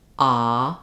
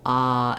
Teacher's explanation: When I say that sound, I'm not moving, I'm just holding the ah, my tongue is in one position